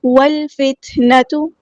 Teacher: واو کو ہم نے لام کے ساتھ ملا دینا، حمزۃ الوصل ہمارا ڈراپ ہو جائے گا